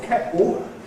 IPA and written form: ˈkeʔo (kettle)